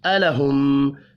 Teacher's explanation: میم مشدد پڑھا جائے گا یہاں پر اور غنہ کریں گے.